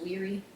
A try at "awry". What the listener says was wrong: I was like, why were you pronouncing a W then?